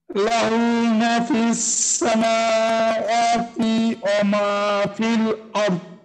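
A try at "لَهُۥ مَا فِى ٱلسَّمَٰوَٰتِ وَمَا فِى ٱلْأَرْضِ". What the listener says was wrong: আচ্ছা, কিন্তু এই যে প্রথম যে মাটা লাহু মা, এই টানটা কিন্তু হয়নি। লাহু মা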